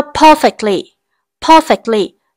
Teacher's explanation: trọng âm của từ này cũng rơi vào âm tiết thứ nhất